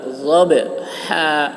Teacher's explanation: ضاد کی آواز موٹی ہوگی، با میں قلقلہ. ضبحا، ہا کو حلق سے.